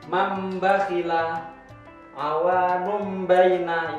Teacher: Jadi iklab itu seperti mau mengucapkan mim, lafadz mim.